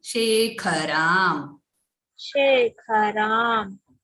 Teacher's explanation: Kha is a Mahaprana. You are stressing it, no, Bhagini?